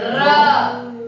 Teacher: हमारे जीवा का अगला भाग दो तीन बार कंपन करती है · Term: लुंठित व्यंजन